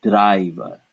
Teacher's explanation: the sound in english i is actually made up of two vowel sounds ah followed by it i i so here is this is